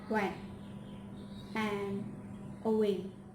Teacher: Last is approximate, by upper and lower lip move toward each other without any contact